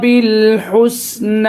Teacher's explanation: با کو لام میں ملائیں، ہا کو سین میں ملائیں اور آواز ہلائیں نہیں